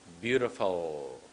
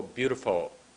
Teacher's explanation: goes behind your top teeth so it's beautiful don't go beautiful don't make a w instead of an L